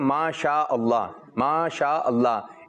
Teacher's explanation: شین جو ہے منہ میں آواز پھیل جاتی ہے